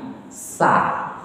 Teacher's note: keluarnya bunyi desisnya itu di celah-celah gigi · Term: Sin